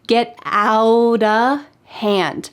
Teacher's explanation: In fact, the word 'of' changes to just a.